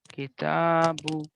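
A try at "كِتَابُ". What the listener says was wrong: अभी शुरू में थोड़ा ज्यादा लंबा कीजिए, आदत नहीं बनेगी फिर लंबा करने की।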